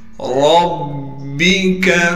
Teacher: ربک، را کو با سے ملائیں گے اس لیے کہ با پر تشدید ہے، اب با پر تشدید ہونے کی وجہ سے تھوڑا ٹھہراؤ کریں گے، کاف کو باریک کر کے پڑھنا ہے بغیر کھینچے۔